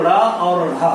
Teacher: ऐसे वर्ड जिनके उच्चारण में हमारी जीवा मूर्धा को स्पर्श करके तुरंत कंठ को स्पर्श करती है, ऐसे को हम उच्छिष्ट व्यंजन कहते हैं।